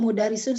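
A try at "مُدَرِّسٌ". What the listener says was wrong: Kali ini mudarrisun. Kenapa mudarrisun? Karena tidak ada tak tidak ada tak marbutoh, kemudian ada huruf ro-nya ditasdidkan, maka ini kita baca mudarris ya, mudarris.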